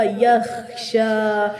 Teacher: خو حلق سے ادا ہوگا